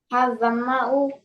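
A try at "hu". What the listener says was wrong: U not. Who. Who.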